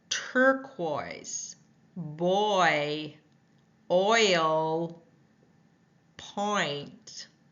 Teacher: tongue starts midback ends High front lips start round and spread